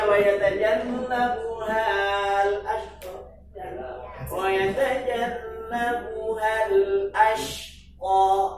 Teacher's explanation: Haknya jangan dipanjangkan karena ketemu huruf sukun. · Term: hadaf